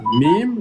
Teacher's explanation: Le mime, parce qu'on utilise les deux lèvres